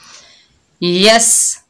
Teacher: ला, या के ऊपर ज़बर, आगे सीन साकिन है, या को सीन के साथ मिलाएंगे, सीन सख्ती और सीटी वाला हरूफ है। यस, जज़म वाला हर्फ हमेशा 1 मरतबा पढ़ा जाता है।